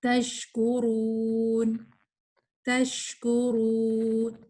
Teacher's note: شین کی ساؤنڈ ہمس والی, اس میں ہمس فیل ہو